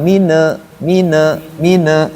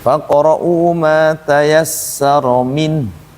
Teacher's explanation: min juga ini dia bainiah mengalir kan dia bukan huruf qalqalah sehingga dibaca jangan mine mine.